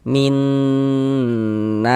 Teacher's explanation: di bagian minnya itu suaranya itu kita tahan, kita panjangkan sejenak ya. Kira-kira sepanjang dua harakat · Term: idgham bi gunnah